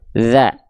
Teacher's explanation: huruf dzal bukan digigit atau bukan harus kuat neken, tapi nggak, cukup disentuhkan tipis-tipis ke ujung gigi seri atas kita